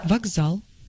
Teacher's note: In this word, k becomes voiced and is pronounced as g.